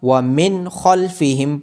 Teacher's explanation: نون ساکن کے بعد حروف حلقی میں سے خا ہونے کی وجہ سے یہاں پہ اظہار ہوگا.